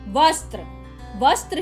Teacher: वस्त्र शब्द में व पर जोर दिया गया है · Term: बलाघात